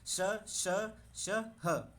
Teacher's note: वर्ण का उच्चारण घर्षण या रगड़ के फल स्वरूप उत्पन्न उष्म वायु से होता है